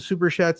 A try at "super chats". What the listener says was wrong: Super what? Chat. You didn't say chat. You didn't say chat. You said shats. Super shats.